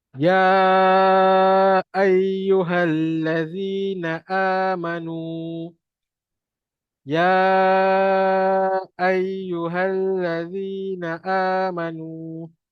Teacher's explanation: Allazi dua harakat. Na'a dua harakat. Manu dua harakat. Abaikan alif yang bertanda bulat.